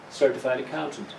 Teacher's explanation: The first syllable is the strong one, certified accountant.